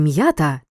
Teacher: а не звук так наприклад у слові м'ята чуємо роздільну вимову графічний знак апострофа вказує на те що я означає два звуки й а попередній приголосний м твердий